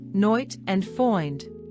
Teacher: Long I sound. The long A in words such as night and find sound more like a softer oi sound